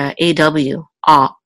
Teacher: And this is a kaf with a kamatz, and this is a lamed. Now, in modern Hebrew, we pronounce this as ah, but anciently, the kamatz was an aw